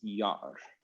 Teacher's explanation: the double ah tells us that there's actually a glottal stop in here